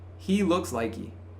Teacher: that like and he is connected. So that H disappears. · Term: silent H